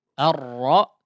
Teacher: Ar-ra ya, difathahkan dulu. Memang di ra di situ ada ketebalan yang harus ditebalkan ya.